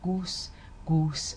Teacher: So if I said goose, it would have sounded more like goose, goose, and it would have been quite a rounded vowel